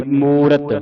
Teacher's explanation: ਰਾਰੇ ਦੀ ਆਵਾਜ ਪੂਰੀ ਕੱਢਨੀ ਮੂਰਤ ਮੁਰਤ ਨਹੀ ਬੋਲਣਾ